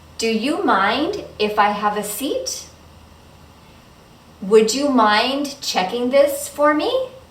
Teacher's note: the voice goes up at the end because these are yes no questions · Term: rising intonation